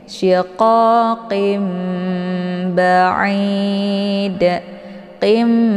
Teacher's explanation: untuk iqlab ini dibaca secara dengung ya jadi ditahan dulu lebih kurang dua harakat kemudian ba dibaca pendekid Ini ada ee